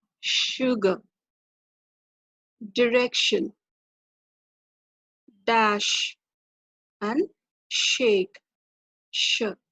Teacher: it's produced with the tip or blade of the tongue against the alveolar ridge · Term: palato or alveolar